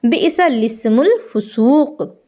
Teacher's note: لام سے پہلے کا الف اور لام کے بعد کا الف دونوں نہیں پڑھا جائے گا، لام پر زیر لگا کر کے پڑھا جائے گا